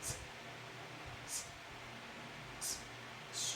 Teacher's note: there's no vibration which means letter t and letter s they are voiceless sounds